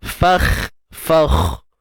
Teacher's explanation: Fa macam biasa, fa matikan kha dengan mengangkat pangkal lidah. Okey, dan sebenarnya makhraj kha ini sendiri di bahagian hujung kerongkong.